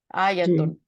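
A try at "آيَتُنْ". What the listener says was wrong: इसको लंबा नहीं करना,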